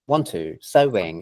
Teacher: It sounds like two syllables because our brain notices the w sound there, even if you don't consciously understand that there's a w, your brain unconsciously recognizes it, right?